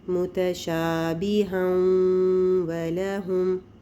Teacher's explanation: مخرج واو کا، لیکن آواز جو ہے وہ غنہ کی باقی رہ جائے گی، اور ناک سے غنہ بھی ساتھ ہوگا